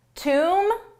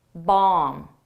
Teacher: the bees are silent in both, you don't pronounce it but the vowel is different